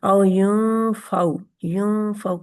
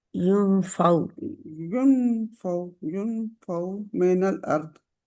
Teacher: یہاں پہ نا اخفا ہوتا ہے، تھوڑی سی آواز ناک میں چھپائی جاتی ہے